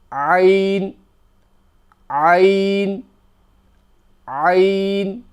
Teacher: It's forced from the middle of the throat.